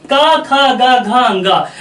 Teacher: जब इन वर्णों का आप उच्चारण करते हैं तो पाते हैं कि जो अंदर से प्राणवायु निकलती है वो कहां बाधित होती है? कंठ पर बाधित होती है।